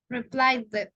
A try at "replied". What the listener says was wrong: Replied. Replied. We don't pronounce, remember, we only pronounce the id when the verb finishes in T or in D. Okay, we saw that some weeks ago in pronunciation.